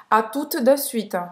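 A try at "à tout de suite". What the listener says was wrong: Não pronunciar esse T. O em português. U em francês é a mesma pronúncia do que a letra U em português. Então, tout, de para fazer o E, você faz a boca do O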